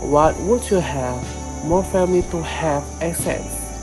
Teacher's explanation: The stress in both accents falls on have family and assets,